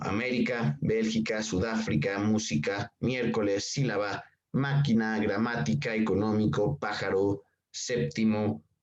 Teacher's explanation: llevan la intensidad de la voz en la ante penúltima sílaba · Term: palabras esdrújulas